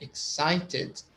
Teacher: you have three syllables. The middle one is stressed, like excited.